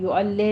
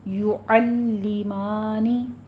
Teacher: آگے پھر اسی طرح سے یعلمانی، لام کے پر تشدید ادا کیجیے اور زیر کی آواز کسرہ کی آواز جو ہے اس کو شارپ کیجیے، باریک رکھنی ہے